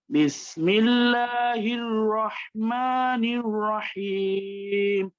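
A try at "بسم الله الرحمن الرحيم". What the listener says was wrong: রয়ের সময় ঠোঁট এখনো গোল হচ্ছে।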